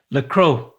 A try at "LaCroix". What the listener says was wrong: Closer. And the R would be a W. I'm trying to get him to say it like a Frenchman. La Croix. LaCroix. By saying that wrong, you said it right. You said it very American.